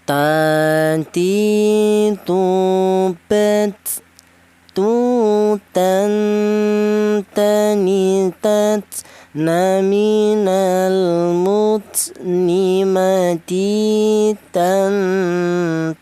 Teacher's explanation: dari ujung lidah menyentuh pangkal gigi sehari bagian atas. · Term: huruf ta